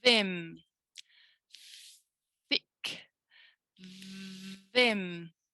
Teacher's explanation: It's just the voicing that's changing.